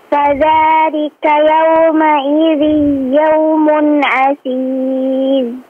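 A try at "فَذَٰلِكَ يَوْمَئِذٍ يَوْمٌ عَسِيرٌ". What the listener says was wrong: Digunnahkan yauma idzin ya. La, dipanjangkan yang panjang. Yauma idzin yaumun.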